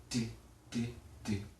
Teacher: Quand on prononce un T, c'est ce qui se passe. Donc le bout de la langue va vers l'avant du palais et bloque le passage de l'air. Et c'est en se décollant du palais qu'on produit le son T.